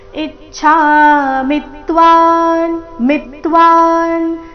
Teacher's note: ಇ ಮತ್ತೆ ಮಿ ಮೇಲೆ ಆಘಾತ